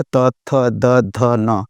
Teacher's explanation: त में दाँत टच होता है, इसको दंत्य वर्ण बोलते हैं। तो दाँतों के पास जो है त, थ, द, ध, न, ये दाँतों से इसका सहायता से उच्चारण होता है।